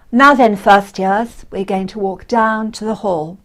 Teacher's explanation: And calm, instructive tone, middle pitch and steady pace.